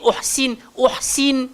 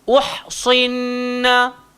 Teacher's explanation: jangan nanti sod tu tak tebal, nanti jadi sin